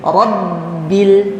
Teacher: ini ada tasydid di huruf ba jadi kita tahan ya itu tahan di bibir